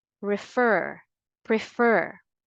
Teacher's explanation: Whether you use the American English pronunciation or the British English, you give a greater force or you put the stress always on the second syllable